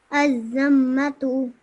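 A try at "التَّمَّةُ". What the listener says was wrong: Okay, this is a ta. So at-tammatu. So over here, what you need to remember is the shadda over here.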